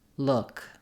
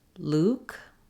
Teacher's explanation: the uh vowel which is LAX like in good book and the O vowel which is tense